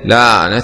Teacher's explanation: العين تخرج من الحلق